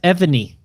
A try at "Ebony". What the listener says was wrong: Syllable in my name. You did not just put an extra syllable in my name. Not Ebony. 2 syllables.